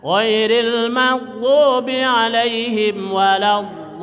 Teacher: namanya mad lazim mustaqol kilmi. Ya, jadi lipatan huruf di situ, maka panjangnya ke 6.